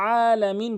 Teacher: হা এবং আইনটি হলকের মাঝখান থেকে চাপ দিয়ে উচ্চারণ করতে হয়